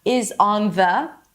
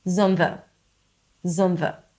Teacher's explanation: So it's not is on the, it's zon the. We reduce the vowel and we connect the words together.